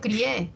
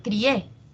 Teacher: hay una cerrada una abierta y la que suena más es la abierta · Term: diptongo